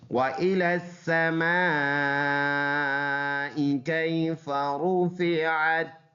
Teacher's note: میم الف مد زبر ما، اس کا جوڑ ہے، مد کی وجہ سے 4 الف لمبا کریں گے، ما، حمزہ زیر ای، ما الى السماء کیف، را کی یا لین ہے، نرم پڑھنے والا، فا اور پھر یہ را ہے، را کے اوپر پیش ہے تو یہ را پر پڑھیں گے اور وقف میں کوئی چینج نہیں ہے، وَإِلَى السَّمَاءِ كَيْفَ رُفِعَتْ۔